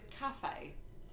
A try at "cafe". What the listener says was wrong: You usually put the emphasis on the first syllable.